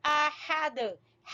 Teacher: ہا وسط حلق سے گلے کے درمیان سے